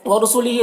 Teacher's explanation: व कुतुबिही यहाँ भी खड़ा ज़ेर है, हा में इसे भी 1 अलिफ के बराबर खींचेंगे। व रसूलिही रौ को पुर पढ़ेंगे, हा में यहाँ पर भी खड़ा ज़ेर है इसे भी 1 अलिफ के बराबर खींचेंगे।